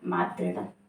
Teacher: मातृ धन ऋणम, मातृ में री है और ऋणम में भी री है, तो मातृ का री और ऋणम का री अंत में दोनों मिलकर दीर्घ हो जाएंगे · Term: दीर्घ री